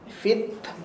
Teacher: ta makhraj dia hujung lidah belakang gigi atas. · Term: huruf hams